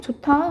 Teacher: 좋다 할 때 봐봐, 아 참 좋다 할 때 히읗 디귿 만나서 티읕으로 축약되죠